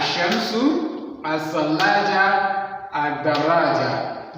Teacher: So the lam, you can't pronounce the lam. The lam here is silent letter. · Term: unpronounced lam